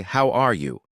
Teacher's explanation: My voice goes up at the end. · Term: Intonation